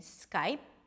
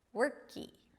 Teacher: And what happens as a result, that people just add another vowel to create that nice familiar feel of open vowel at the end of a word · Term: very tiny E sound